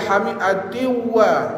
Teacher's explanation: Nun tanwin tu masuk dalam waw. Ha, jadi kena tunggulah dua harakat. Jangan ma'al hamiatin wa tasir gitu. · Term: Idgham ma'al gunnah